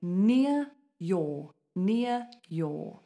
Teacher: these Ares we don't say them because a consonant comes after them